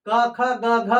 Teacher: क ख ग घ कहां से हो गया जी ये कंठ से हो गया